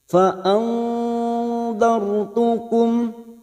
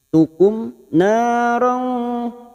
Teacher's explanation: Fa andartukum sukun yang didahului fathah kita baca tafkim atau tebal dartu fa andartukum. Mim sukun bertemu nun idhar safawi dibaca jelas. Tukum narong, na fathah diikuti alif dua harakat.